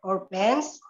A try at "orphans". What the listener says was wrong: Ini dibaca orphans. Pakai F ya, orphans.